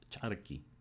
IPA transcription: ch'araki